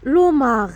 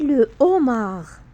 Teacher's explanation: Par contre, si un mot commence par un H aspiré, tout est interdit. Il se comporte comme une vraie consonne, donc on ne fait pas d'élision. Donc, on ne dit pas l'homard, mais le homard.